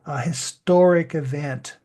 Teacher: Sound much stronger and the H sound would be swallowed but now we are more clearly pronouncing the H of historic